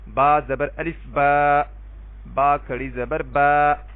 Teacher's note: اب دیکھیں دونوں با کو میں نے برابر ہی لمبا کیا ہے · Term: الف مدہ